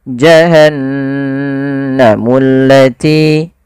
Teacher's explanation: Dia menandakan di situ bacaannya adalah bacaan gunnah. Gunnah yaitu membunyikan suara hingga masuk ke rongga hidung kita. Maka suara nunnya dimasukkan ke rongga hidung.